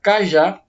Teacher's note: a sílaba mais forte de uma palavra foi a última sílaba nós chamamos ela de oxítona